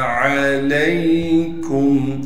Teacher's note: عین کو صاف کر کے گلے سے نکالیں گے, لام کو آگے یا ساکن سے ملا دیں گے